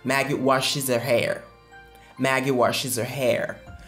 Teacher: La terminaison ES se prononce is.